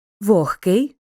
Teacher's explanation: дзвінкий г перед глухим оглушується і вимовляється як х